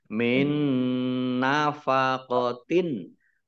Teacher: Idgham masuk bi dengan gunnah mendengung. Mendengung nun ditandai nunnya ada tasdidnya, dibaca mendengung ditahan 2 harokat. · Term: idgham bi gunnah